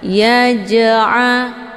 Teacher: Cara bacanya, jimnya dipantulkan dengan pantulan ringan. Ya ja'a, keluar bunyi je. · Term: qalqalah sughra